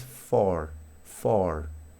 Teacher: La R suena de manera mucho más contundente en inglés americano con esta vocal.